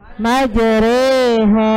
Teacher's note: Memiringkan bunyi fathah ke kasroh atau mencondongkan bunyi fathah ke kasroh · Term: bacaan imalah